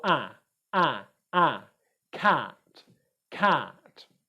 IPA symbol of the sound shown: æ